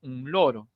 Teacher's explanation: La lengua está hacia arriba en los alveolos. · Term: alveolar